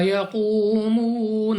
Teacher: قاف مستعلیہ میں سے ہے پر یعنی موٹا پڑھنا ہے